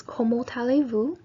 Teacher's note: the T connects into the allez-vous because the letter immediately following the T is a vowel